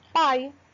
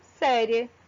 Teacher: Como exemplo de ditongo oral, quando o A sai apenas pela boca